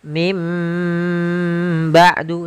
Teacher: ba'du sambil ditahan dengan ghunahnya, yaitu suara nunnya dirubah menjadi suara huruf mim. Jadi, iqlab itu merubah huruf suara huruf nun menjadi suara huruf mim.